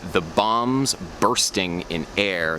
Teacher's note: In the English phrase, the bombs bursting in air, there's emphasis on bombs, burst, and air.